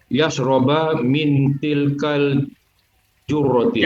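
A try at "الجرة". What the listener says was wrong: Al-jarroti afwan. Khata ya. Al-jarrah bukan al-jurrah, al-jarrah.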